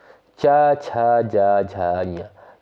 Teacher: उनका उच्चारण स्थान होता है तालु या तालव्य